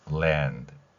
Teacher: 을의 입모양에서 뒤에 소리를내는 것입니다 그래서 랜 land 이렇게 발음하는 것이죠 디귿을 약하게 하거나 거의 소리가 나지 않는다고 보셔도 무방합니다